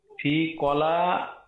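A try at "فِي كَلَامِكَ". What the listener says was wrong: ফি কালামিকা, ফি কালামিকা। কালামুন মানে হচ্ছে কথা, কলা না, কালামিকা। ফি জের দিবে, ফি কালামিকা।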